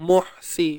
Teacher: ha pedas, sempitkan di bahagian tengah kerongkong kita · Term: huruf ha